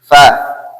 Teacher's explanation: নিচের ঠোঁট উপরের সানাইয়া দাঁতের আগে লাগিয়ে